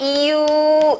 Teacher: 반모음 이에 우를 붙이면 이유 이렇게 됩니다